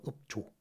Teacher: 비읍하고 지읒 이렇게 예사 소리끼리 부딪히다 보니까 이게 된 소리가 일어나더라. 그래서 읍조가 됩니다.